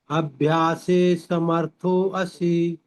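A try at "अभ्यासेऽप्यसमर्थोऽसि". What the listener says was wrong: असी नहीं बोलना है। अभ्यासेप्य, अभ्यासेप्य समर्थोसी। अभ्यासे प्य समर्थोसी।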